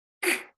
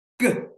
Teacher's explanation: You have to turn your voice on for the g.